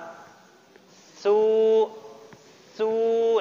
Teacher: dia agak manyun kan karena dhamma